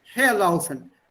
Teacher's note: Stress is on the first syllable.